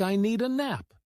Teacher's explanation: The words need and a connect so smoothly that the d sound blends in. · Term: linking sounds